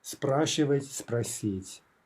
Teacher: If the final stem consonant, in this case S, can mutate, it typically does. And we see that here, right? S has gone to sh.